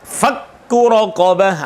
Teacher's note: sifat hamas itu ditiadakan dan tidak boleh muncul sama sekali ketika huruf kaf dan ta bertasdid